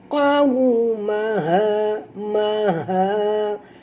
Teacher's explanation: huruf qaf tebal, waw sifatnya lin, jadi muncungkan mulut.